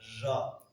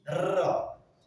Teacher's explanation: le Ra on le roule. On dit pas Ja, on dit Ra. Quand on dit Ra, ce qui se passe, c'est que c'est plus que le haut.